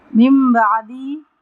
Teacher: نون ساکن کے بعد با آ رہا ہے تو نون کی آواز کو ہم میم سے بدل کر پڑھیں گے، یعنی یہاں پہ ہم اقلاب کریں گے.